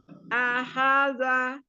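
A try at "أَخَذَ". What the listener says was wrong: Akho ya, bukan aha. Akhoda. Anda jangan diayun. Akhoda. Jadi huruf pertama, kedua dan ketiga sama temponya ya.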